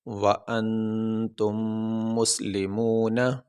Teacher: یہاں پہ آخری حرف ہے نون، تو وقف کرتے ہوئے نون کے اوپر جو زبر ہے وہ نہیں پڑھیں گے، نون کو ساکن پڑھیں گے